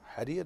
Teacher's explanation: فنرقق الراء الأولى حرير لأنها مكسورة، ونرقق الراء الثانية كذلك لأنها مكسورة، لأن وقفنا على ساكنة وقبلها حرف مد، لكن في الوصل تفخم لأنها تصبح مضمومة حرير، فتفخم، تستعلي اللسان، تستعلي باللسان عند النطق بالراء المفخمة.